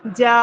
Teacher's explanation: ایک وہی زبر یاد رکھیں، اور جو ہمارا کھینچنے والا پارٹ ابھی بڑھ جائے گا وہ بھی اتنا ہی ہونا چاہیے، ایک الف کے برابر. ایک الف کے برابر وہی زبر کی آواز اور ایک الف کے برابر ہمیں اضافی کھینچنا ہے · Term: کھڑا زبر